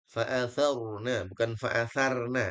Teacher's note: athar ra-nya ditebalkan dia ra tafkhim